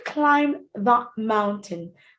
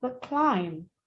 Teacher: Now for climb, you notice the B is silent. So it's not climb, but climb.